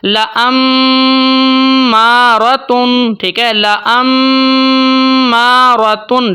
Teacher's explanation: تو پورے قرآن پاک میں جب بھی نون یا میم کے اوپر تشدید آ جاتی ہے تو وہاں پر جو ہم غنہ کرتے ہیں اس کو ہم بولتے ہیں غنہ زمانی۔ آواز کو تھوڑی دیر کے لیے ہم نے ہولڈ کرنا ہوتا ہے، ناک کے بانسے سے ادا کرنا ہوتا ہے، مقدار 1 الف ہے۔